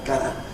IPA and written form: gənə (gonna)